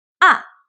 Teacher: The 4th Tone, à, it goes straight down, like down